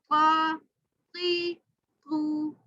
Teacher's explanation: پیچھے سے زبان کی جڑ اوپر لگے گی، موٹا ہوگا